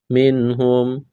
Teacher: نون ساکن کے بعد ہا ہے، حروف حلقی ہے، یہاں پر اظہار کریں گے، غنہ نہیں کریں گے، آواز ناک میں نہیں چھپائیں گے